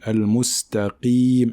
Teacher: même si la lettre qaf porte une kasra, il faut quand même qu'elle soit emphatique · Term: qaf emphatique